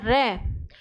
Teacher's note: र एक ऐसी ध्वनि है जिसको हम जब बोलते हैं तो जीभ में कम से कम चार दो-तीन बार कंपन होता है और जहां पर दो-तीन बार कंपन हो वो वर्ण होते हैं प्रकंबित वर्ण। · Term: प्रकंपित व्यंजन, प्रकंपित वर्ण